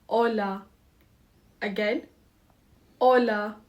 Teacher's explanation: The H is silent. We don't say it like we do in English.